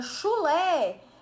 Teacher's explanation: Eu tenho lá duas sílabas, a última é tônica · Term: oxítona